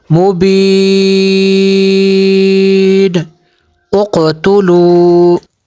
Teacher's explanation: قاف پہ یہاں پہ بھی قلقلہ کرنا ہے